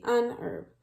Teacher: Even though it starts with H, we do not pronounce the H, so it needs to be unherb.